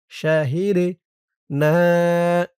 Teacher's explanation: দালটা কলকলার হরফ, ধাক্কা দিয়ে পড়তে হবে। শাহিদে না, না এক আলিফ টান।